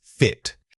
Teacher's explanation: Focus on keeping your jaw and tongue very neutral for this sound. The vowel is short and unstressed, so don't let it linger or open too much. It should feel like a quick snap of the breath followed by the t-top.